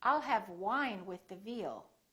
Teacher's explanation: lower lip touches the upper teeth and feel the vibration